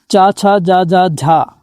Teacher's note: च, छ, ज झ और लघु ई दीर्घ ई का जो उच्चारण होता है स्टूडेंट वो आपका तालु से होता है